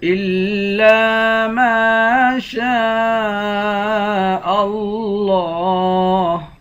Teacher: پڑھیں گے لفظ اللہ کے لام کے اوپر کھڑا زبر ہے لفظ اللہ کے لام کو موٹا پڑھیں گے ایک الف کی مقدار کھینچ کر بھی پڑھیں گے الا ما